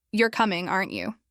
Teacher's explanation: With a falling tone at the end, it changes completely. Now it sounds like I'm confident that you're coming.